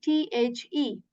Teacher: How you articulate is that you put the tip of your tongue at the back of your upper teeth to say the.